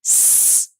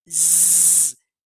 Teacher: Só que a diferença, s, não vibra o pescoço, z, vibra o pescoço.